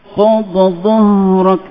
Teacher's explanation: Dha tu ditutup mulut, ditinggikan sebutan dia.